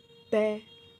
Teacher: त हमारी जीभ दांत को टच करी, इससे स्पष्ट है ये स्पर्श व्यंजन कहा जाता है।